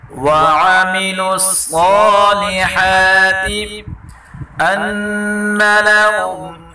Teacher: نون مشدد گنہ کے ساتھ پڑھیں گے